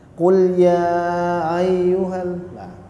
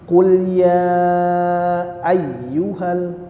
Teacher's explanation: hamzahnya itu kita ucapkan dengan jelas